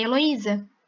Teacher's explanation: Então, a sílaba mais forte, a sílaba mais brilhante é o I. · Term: sílaba tônica